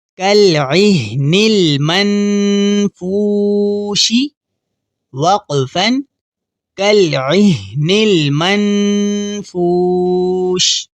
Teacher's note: اب یہاں بھی واو مدہ ہے تو واو مدہ کو ہم ایک الف کے برابر کھینچ کر پڑھیں گے، اور یہاں نون ساکن کو دیکھیے، نون ساکن کے بعد اگر حروف حلقی میں سے کوئی حرف نہ ہو تو ہم وہاں غنہ کرتے ہیں، یہاں حروف حلقی میں سے کوئی حرف نہیں ہے تو ہم یہاں غنہ کریں گے۔